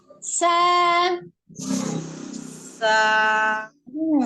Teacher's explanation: Ujung lidah ada di antara ujung gigi seri atas dan bawah, mendekati gigi seri bagian bawah ya, mendekati gigi seri bagian bawah. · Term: huruf sin